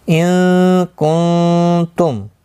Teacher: मीम साकिन के बाद स्वाद आए, इजहार शफ़वी होगा, यहाँ गुन्ना नहीं होगा